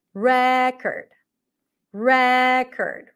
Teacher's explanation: when it's a noun I bought a new record the primary stress is on the first syllable